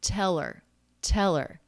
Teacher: the tr cluster then it might be a ch sound teller we have a dropped h the er the schwa r ending just links on to the word before